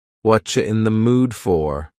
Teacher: here the word you has been reduced to Cha